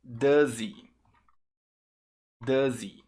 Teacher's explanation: Você junta o som do Z, o H fica mudo. Esse é um padrão que acontece às vezes com o H nos pronomes.